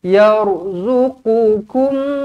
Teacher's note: Ro di baca dengan tebal kenapa Sebab huruf sebelumnya berbaris atas